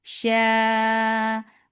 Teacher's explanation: غرورا ومخرج of vowel circle in your lips of a top and jaws allow make a lean soft شا مد متصل واجب you're making it 4 counts long and the long vowel should not go into your nose